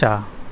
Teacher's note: या और शा दोनों तालव्य में आते हैं।